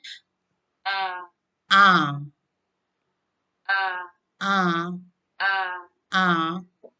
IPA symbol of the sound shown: ʌ